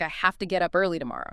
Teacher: Have to frequently becomes hafta